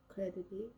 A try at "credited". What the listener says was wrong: There you go. Perfect.